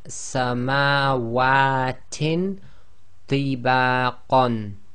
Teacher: The next one is ikhfa, so we have samawatin tibaqan, so the ta with kasratain followed by one of the other 15 letters, i.e. ba, so we do the ikhfa hiding of the noon sound and trying to get ready for the next articulation point